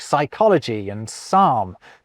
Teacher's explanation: we pretend the P isn't there when we pronounce Greek-derived words like psychology and psalm.